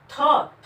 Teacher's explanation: थ में वायु की मात्रा अधिक लगती है।